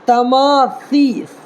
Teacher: ثا ہے نا، سین نہیں ہے جو سیٹی نکالنا ہے